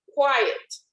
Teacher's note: so the accent is in the first syllable